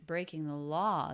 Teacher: law is the most stress it is the peak